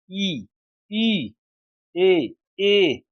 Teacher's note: जिन स्वरों के उच्चारण में जीभ का अग्र या अगला भाग काम करता है। इनका उच्चारण जीभ के अगले भाग से होता है। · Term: अग्र स्वर